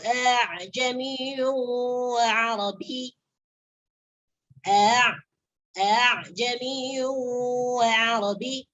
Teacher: Jadi a yang kedua nih dibaca antara hamzah dengan alif. Jangan dibaca dengan hamzah muhaqqaqah. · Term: tashil